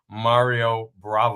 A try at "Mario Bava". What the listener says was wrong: Mario Bava? Yeah, not Brava, Bava.